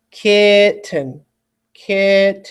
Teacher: the ki part is making slightly more work for me so it's called the stressed part